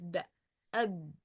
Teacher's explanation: ba is come from lips, so I have two parts to produce ba, two organs to produce ba letter, the upper lip with the lower lip. When the upper lip is touching the lower lip in the inside part, so I produce b. يبقى when two lips is touching each other or close, I produce the sound of b letter.